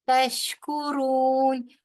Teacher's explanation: تشکرون را کے اوپر پیش ہے، لہذا را جو ہے وہ پر پڑا جائے گا